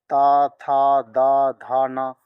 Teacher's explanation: ये त वर्ग है इनका उच्चारण स्थान दांत